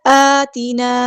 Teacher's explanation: آتینا الف مد آیا 2 کاؤنٹ لمبا کریں گے